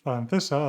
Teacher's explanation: In Latin America, they would say S, [SPA] «francesa». In most of Spain, we would say /θ/